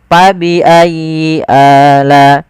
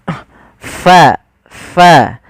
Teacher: Adalah ada angin yang dikeluarkan, karena fa salah satu sifatnya sifat hamz, yaitu mengalirnya nafas kita. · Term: huruf fa